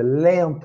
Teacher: A gente não pronuncia o N. A gente faz o som do E pelo nariz, né? É um som nasal.